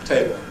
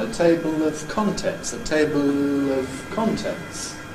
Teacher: I’m not unusual in using a Clear /l/ before a vowel as long as it’s closely linked into it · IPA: [ˈteɪbl]